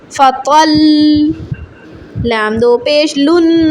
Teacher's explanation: فا زبر فا، طا لام زبر طل. طا موٹا پڑھیں، لام کو تشدید کریں، مشدد لام ہے، سختی کریں، دباؤ ڈالیں